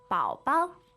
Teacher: third tone and neutral tone